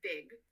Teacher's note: The P sound is replaced with a B. So pig would be pronounced big.